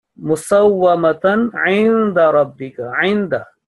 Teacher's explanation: Ayn, which is coming from the middle of throat, not from the third part of throat, which is the lower part.